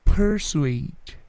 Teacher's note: P-nya tidak terlalu plosif ya